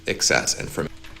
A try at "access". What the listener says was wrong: It sounded almost like you said this one, but we want to do this one, access, so with an a and the stress on the first syllable, access.